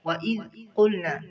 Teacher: ذال کو نرمی کے ساتھ قاف کو موٹا کریں گے.